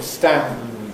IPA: stæ̃m…